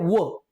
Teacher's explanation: करून वर्ण जो उच्चारला जातो दंतोष तो एकमेव आहे व बघा व चा उच्चार करताना दंतोष दातांचा वापरही होतो आणि ओटांचा वापर होतो